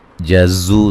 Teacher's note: جزو، زو و مدہ ہے، زا کو زور سے سیٹی سے ادا کریں گے